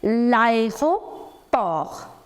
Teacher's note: we do not pronounce the last consonant, so T is silent. You say l'aéroport.